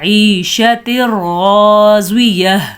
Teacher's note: الف کو ہم نے کھینچا ہے لیکن ہم نے را پہ رکنا نہیں ہے، اگر ہم رکیں گے، اگر آپ پڑھیں گے عیشت راضیہ تو آپ نے غلط کر دیا، یہاں پہ بالکل رکنا نہیں ہے، تو اس کو کہتے ہیں ادغام بلا غنہ۔